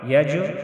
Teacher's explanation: یج جیم میں قلقلہ کریں گے، جیم ساکن ہے تو اس میں ہم قلقلہ کریں گے